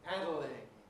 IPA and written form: ˈpædlɪŋ (paddling)